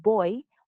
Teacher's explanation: we can classify it as voiced bilabial stop